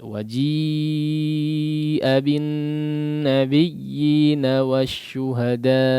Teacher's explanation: Kadarnya 4 atau 5 harakat untuk mad wajib muttasil.